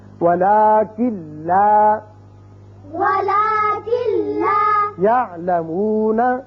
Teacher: کاف سیدھا لام سے ملے گا، نون کی آواز پیدا یہاں نہیں ہوگی، یعنی غنہ نہیں ہوگا